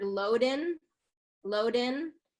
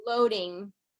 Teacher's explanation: you're kind of ending with that n sound at the front of the mouth and the ing sound is kind of stopped in the back of the throat